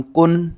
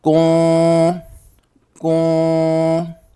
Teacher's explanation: زبان کو تالو سے جدا رکھ کر نون کی آواز کو ناک میں چھپانا ہے اور اس پر غنہ بھی کرنا ہے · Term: اخفا